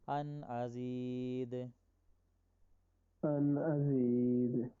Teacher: ان یہاں پہ غنہ بنتا تھا لیکن ہم نے نہیں کیا اس لیے کہ اس کے بعد حمزہ آ گیا